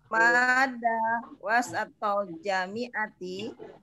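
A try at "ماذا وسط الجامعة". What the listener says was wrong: Za, itunya lidahnya keluar dikit supaya jangan jadi mada.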